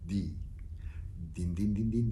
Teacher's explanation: And the D that you use, though, has to be a weird D for English speakers again, because it's a D that's between your teeth